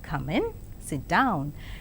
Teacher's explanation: rising tone is also used in polite requests